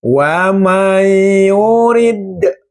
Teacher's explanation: Ada kolkolah namanya kolkolah kubro. Huruf dal berada di akhir kalimat.